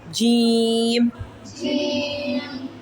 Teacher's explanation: इसकी सीटी नहीं निकालते। जी जी जबान के दरमियान से और तालू के दरमियान से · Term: जीम